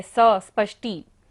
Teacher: नास्तं कदाचिदुपयासि नराहुगम्यः। स्पष्टी, स्पष्टी में दंती सा भी है, स स्पष्टी, और मूर्धन्य शा भी है